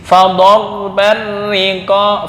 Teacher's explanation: Fador itu tafkhim, langsung ditarkikkan di ri.